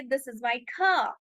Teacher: they are not pronouncing the R sound at the end of the word